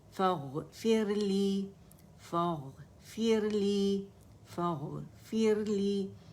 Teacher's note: فا اغفر لی ہے لیکن ہم اس کو ساتھ ملا کے پڑھ لیتے ہیں